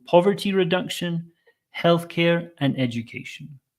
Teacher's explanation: This is a common pattern in English. 3 items, the first 2 in a list go up and the last one comes down.